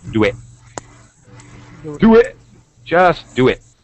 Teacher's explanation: starts with a vowel so we use what we call um we put a joining sound either a y or a w in between so we can nicely join the words